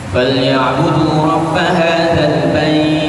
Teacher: Ha yang bait tu dipanjangkan. Bait dipanjangkan dalam keadaan wakaf empat atau enam. Tetapi kalau dalam keadaan kita wasal, kita tidak boleh baca empat atau enam. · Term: hukum madlin